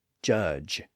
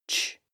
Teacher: like at the beginning and end of the word judge again this J sound is just the voiced version of the CH sound